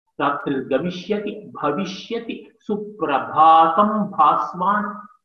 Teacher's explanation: And bhasvan, just see the alliterating sounds of bha, the labial sound, the stressed one